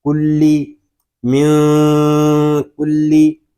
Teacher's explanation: کاف کو لام کے ساتھ ملا رہے ہیں کیونکہ لام مشدد ہے. لام زیر لی، کلی.